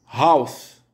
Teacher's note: H à l'initiale d'un mot est prononcé avec une forte expiration.